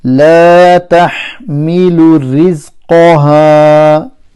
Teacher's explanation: Rizqa, qa full mouth, ra empty mouth because it's got a kasra, and ha is harf mad.